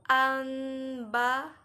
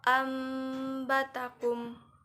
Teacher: Cara membaca dalam hukum bacaan iqlab yaitu bacaan nun mati atau tanwin tidak lagi dibaca sebagai nun atau tanwin. Maka nun atau tanwinnya berubah menjadi suara mim.